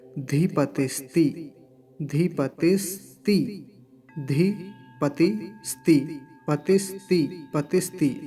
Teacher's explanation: आधा स दंत्य सकार है और तकार पर ह्रस्व इकार है। एक साथ बोल लेंगे तो बड़ा आसान हो जाएगा, क्योंकि यदि इतने हिस्से को केवल अकेले बोलेंगे तो कठिन रहेगा।